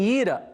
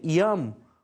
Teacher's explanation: Em ira, o I é vogal, tá? Mas em iam, o I é semiconsoante